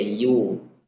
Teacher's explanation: yuh ya-nya dibaca dhammah, maka monyong bibirnya yu